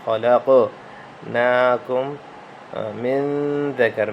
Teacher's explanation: انا خلقناکم یہاں پہ بھی نون مشدد کا غنہ ہے۔ خلقناکم خا کو موٹا کریں، قاف پہ جھٹکا دیں، قلقلہ کریں۔ خلقناکم من ذکر من غنہ کرتے ہوئے یہاں پہ اخفاء کا غنہ ہے، تو کوشش کریں کہ زبان کو دانت کے ساتھ لگاتے ہوئے غنہ کریں۔